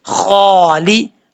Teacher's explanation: خا حروف مستعلیہ میں سے ہے، پر پڑھا جائے گا. کھڑا زبر ہے، 1 الف کی مقدار، اس کو لمبا کر کے پڑھیں گے.